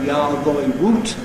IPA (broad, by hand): j.ɑː.ð.ɔɪ w.uː.t